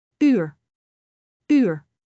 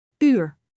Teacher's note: You need to round your lips like saying oo, but say ee from inside.